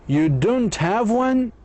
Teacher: You should show surprise in a negative questions. You show surprise in a negative question if your intonation goes down low and then up high at the end.